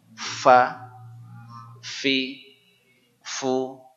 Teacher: Ujung gigi seri atas menempel di perut bibir bawah sini.